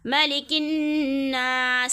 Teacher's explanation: سین میں جو ہے وہ سیٹی کی آواز نکلے گی، اور سین کو جو ہے ہم وقف کر دیں گے۔